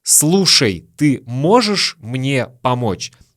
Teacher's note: Слушь вместо «слушай», «можь» вместо «можешь».